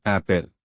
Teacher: इसका साउंड ए है जो बिना रुकावट के गले से निकलता है।